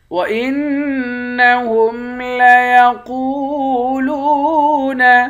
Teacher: وَإِنَّهُمْ لَيَقُولُونَ، نون مشدد پر غنہ کریں گے، قوف کو موٹا پڑھیں گے، واو کے ساتھ ملا کر ایک الف کی مقدار کھینچیں گے، یہاں بھی لام کو واو کے ساتھ ملا کر اس کو بھی ایک الف کی مقدار کھینچ کر پڑھیں گے، دونوں حروف مدہ ہیں۔